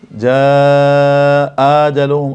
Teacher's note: 2 حمزے ہیں تو یہ دوسرے حمزے کو الف سے بدل دیں گے، جاء آجلہم، اب اس آ میں مد نہیں کریں گے۔